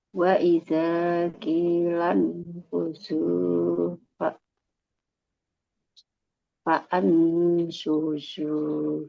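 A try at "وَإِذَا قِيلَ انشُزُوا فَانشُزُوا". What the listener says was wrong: Ini Hamzah wasal juga, Bu. Jadi fang. Wa idza qilang ini juga nih. Hamzah wasal. Qilang syuzu fan syuzu, Ibu. Syu, syu, syuzu, syuzu, fan syuzu, syuzu.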